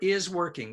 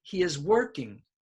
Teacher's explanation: Now, the multiple verbs are is working, so working will be stressed.